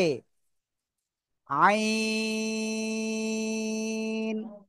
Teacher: এইবার এই অক্ষরটা চার আলিফ টেনে পড়তে হবে। আইন, গলার মধ্যখানে চেপে ধরে, ঠিক আছে, চার আলিফ টেনে পড়তে হবে